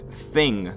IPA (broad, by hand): θɪŋ